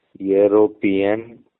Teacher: It begins with a vowel but sounds like y e o r o p i n. So it begins with a consonant initial y sound.